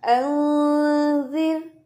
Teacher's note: कुरान पाक में ये भी आता है अंजिर नून जाल रॉ, तो ये जो रॉ है ये साकिन है, उससे पहले जाल के नीचे जेर है, तो ये रॉ कभी भी मोटा नहीं होगा, वक्फ की सूरत में ये पढ़ा जाएगा अंजिर जिर जीरो, ऐसे नहीं पढ़ना अंजिर जिर, ठीक है। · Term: रॉ साकिन मा कबल कसरा